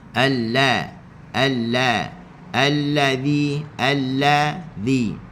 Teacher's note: Okey, kena ingat huruf zal hujung lidah diletakkan di hujung gigi atas. Alla alla allazzi allazzi.